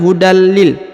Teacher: huruf tanwin perhatikan ketika bertemu dengan lam yang bertasdid maka dia langsung melebur ke sini lalu menghilang tanwinnya langsung masuk ke huruf lam ya hudal ya bukan lagi Hudan tapi hudalil ya hudallil hudallil